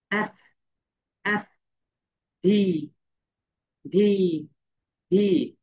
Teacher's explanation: ভি, এই দুইটা কিন্তু একই। এফ এন্ড ভি যখন তোমরা উচ্চারণ করবে তখন তোমাদের উপরের দাঁত নিচের ঠোঁটের সঙ্গে হালকা টাচ করবে।